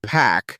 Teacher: in the word pack, the P has a burst of air. Hold your hand close to your mouth as you say it, and you should feel a gentle puff. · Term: aspirated, aspirated sounds